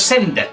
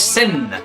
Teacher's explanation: en la combinación nd la d no se suele pronunciar hay un ligero resquemor cillo de una d pero no llega